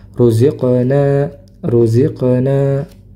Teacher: huruf qof ketika sukun maka dipantulkan